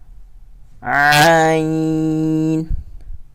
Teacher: اس کی آواز بھی آپ نے حلق سے نکالنی ہوگی، یہ بھی حروف حلقی ہے